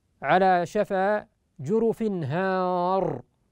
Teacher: يقرأها حفص على شفا جرف هار بفتح الألف وتفخيم الراء